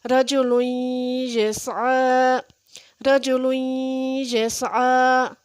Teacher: نون تنوین کے بعد یا ہے تو اس کے اوپر غنہ کریں گے